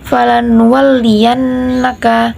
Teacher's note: falan walliyannaka ada nun tasjid, maka kita bacaannya dengung